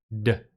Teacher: If you put your hand on your throat when you say the d at the end of card, you can feel your throat vibrate. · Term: voiced sound